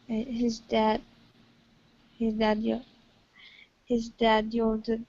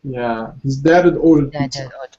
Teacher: It doesn't always have to have a linking Y, you see, or you know, a light W. As long as you take out the H, then you're fine. So, in this case, we're just reducing the H.